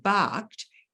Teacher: if you look at ED as in the word barked, it's ED making the sound T as in barked.